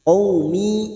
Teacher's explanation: bukan mendengung ya, bukan ditahan, tetapi hanya dipanjangkan 2 harakat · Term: mat tamkin